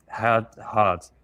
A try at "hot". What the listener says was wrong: Hot. You want to put the T. And we're releasing it now. You can also hold it. It doesn't matter.